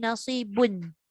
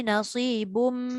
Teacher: Dia dah tak boleh bunyi nasibun. Dia bunyi nasibum. Kan? Dia masuk sepenuhnya dekat mim. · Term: idgham ma'al gunnah kamil